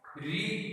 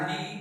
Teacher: मूर्धा में आ गया री, दंत में आ गया ली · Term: उच्चारण स्थान